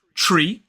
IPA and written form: triː (tree)